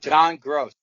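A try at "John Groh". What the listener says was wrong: That should be a deduction on pronunciation. It's not gross. It's grow.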